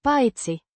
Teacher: A conjunction meaning except or besides, pronounced Paitsi. with stress on the first syllable